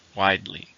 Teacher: How many syllables in widely? 2, stress in the first.